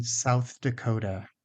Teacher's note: And also the voiceless th for south, as in South Dakota.